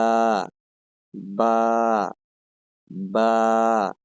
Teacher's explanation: দুই ঠোঁটের ভেজা জায়গা হইতে উচ্চারিত হয় বা